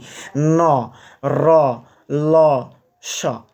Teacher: ন র ল স এগুলো সবগুলোই দাঁতের সঙ্গে লাগছে। তাহলে এটা হচ্ছে দন্তমূলীয়।